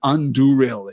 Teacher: Effectively, it is Anduril. It is the stress there falls on the second of the three syllables